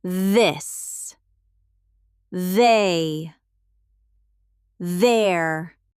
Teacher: For the voiced the like the or this, you add your voice